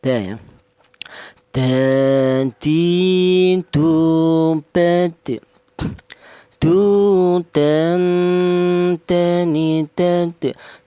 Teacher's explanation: Untuk huruf dal, huruf dal ini keluarnya huruf berasal dari ujung lidah menyentuh pangkal gigi seri atas.